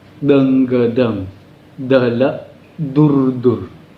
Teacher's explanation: Ketika kita melafalkan D, ujung lidah kita ada seperti digigit gigi depan